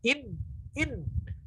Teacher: Maksudnya proses keluarnya suara dari hidung itu, ketika nun bertasydid itu sempurna masuk ke hidung semua. In. Ketika kita tutup hidung kita, ya nggak akan bisa keluar lagi, karena dia paling sempurna keluarnya semuanya dari hidung.